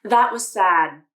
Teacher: The D sound in sad was unreleased. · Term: unreleased D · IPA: /d/